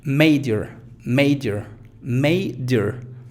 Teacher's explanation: en la sílaba donde no está la schwa, como en este caso may, se pronuncia fuerte